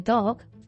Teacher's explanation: The final sound of the dog is partially devoiced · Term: final devoicing